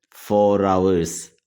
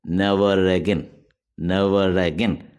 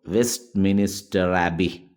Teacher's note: മിനിസ്റ്റർ അബി this is called linking r what is linking r a letter r in word final position is normally pronounced before a following vowel but is silent before a following consonant as in far far